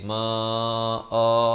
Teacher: Saya waqaf di situ. Ma'an bila waqaf jadi ma'a.